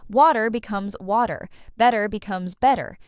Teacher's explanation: That T just disappears into a soft D sound. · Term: flapping, the flapping